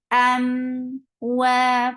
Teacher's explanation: For fatha, open your jaws, attach it meme, we will get sifa of tawassut, and tawassut is a medium flow of sound. Wa, for wow, circle your lips, and make it 2 counts long, because you can see standing fatha here.